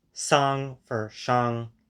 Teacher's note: non-standard Mandarin dialects. For example, those that merge the alveolar and retroflex sibilants, so they don't have a 四是 distinction.